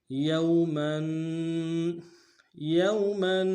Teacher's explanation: یا کو واو کے ساتھ ملانا ہے، واو لین بغیر کھینچے پڑیں گے